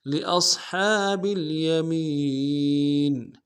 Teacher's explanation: لأصحاب میں حمزہ کو صاد کے سامنے لائیں گے، صاد کو موٹا ادا کرنا ہے